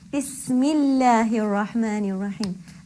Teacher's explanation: Because of Bismillah, again the kasra before Allah will make the lam light. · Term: light lam